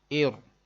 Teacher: اس را ساکن سے پہلے زیر ہے، اس کو باریک پڑھیں گے